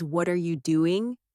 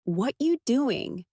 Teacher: Slowly. It sounds very clear but quickly it becomes what you doing. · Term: blended speech